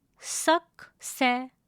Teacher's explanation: It has three syllables. Please note that the R sound in the end of the word is not pronounced.